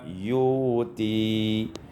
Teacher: ibdalul hamzati wawan, ditukar hamzah dengan waw, sehingga kita baca yuti.